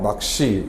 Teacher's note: 같은 경우에 낚시는 쌍 기억이 오는 경우에 기억 대평로 바뀐 뒤에 뒤에 오는 시가 안 울린 예사 소리니까 된 소리 되기가 돼서 낚시 이렇게 발음이 되죠